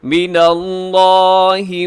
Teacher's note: لفظ اللہ کی لام سے پہلے نون کے اوپر زبر ہے، آپ اسے موٹا پڑھیے گا لفظ اللہ کو۔